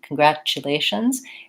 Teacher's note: Congratulations. And this TU in American English actually sounds more like a ch sound